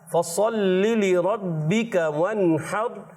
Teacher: नून में कलकला नहीं करेंगे, और हा को बारीक रखेंगे और रा को ऊपर रखेंगे